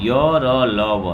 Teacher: आगे आता है अंतस्थ व्यंजन, जो कि आपको य, र, ल, व ये 4 व्यंजन का जो उच्चारण होता है जीभ मुंह के भीतर किसी भाग को पूरी तरह से स्पर्श नहीं करती